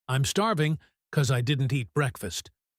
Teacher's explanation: I didn't is strong because of the negative. Eat is strong. Breakfast is strong. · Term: stressed words